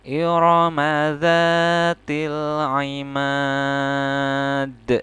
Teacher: Huruf dal ini ketika disukunkan maka dia menjadi qalqalah ya. Dia qalqalah. · Nah, ini huruf dal termasuk ya, makanya ketika membaca ini huruf dalnya harus dipantulkan. Namanya kalau di belakang seperti ini qalqalah kubro atau qalqalah besar ya.